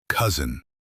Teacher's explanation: The letter S in cousin actually sounds like a soft Z. We say cousin, not cousin.